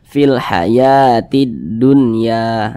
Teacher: alif lam berjumpa dengan huruf Dal hukumnya adalah alif lam syamsiah maka huruf lamnya ini dia tidak dibaca langsung masuk ke huruf Dal